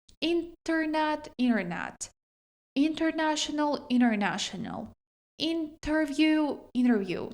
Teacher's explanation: Дуже часто в американській вимові ось цей а префікс, оця приставка inter вимовляється як inner.